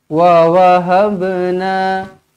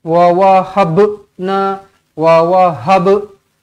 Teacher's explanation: dia tak perlu sampai berhenti sekejap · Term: Qalqalah Sugra